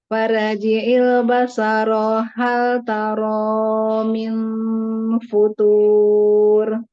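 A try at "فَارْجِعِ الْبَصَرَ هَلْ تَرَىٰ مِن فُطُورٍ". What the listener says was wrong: Basoro, baso, so. Ya, so. Bibirnya nggak usah ikutan. So, coba so, si, su. So, bukan saya. Jadi baso, bukan basa, baso, so.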